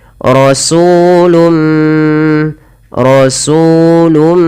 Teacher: Apabila ada tanwin, pada dasarnya tanwin adalah suara nun yang dimatikan atau dilafalkan tapi tidak ditulis, bertemu dengan huruf mim, maka suara nunnya dimasukkan kepada huruf mim dan diganti dan dihilangkan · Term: idgham bi gunnah